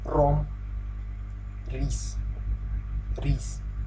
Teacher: It's pronounced like letter R, but you must realize that you need to roll it, otherwise it's not so pretty.